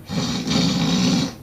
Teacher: Pulmonic ingressive nasal velar trill.